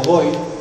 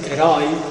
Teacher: Non mesmo boi, que temos un O pechado, que heroi, que temos un O aí aberto.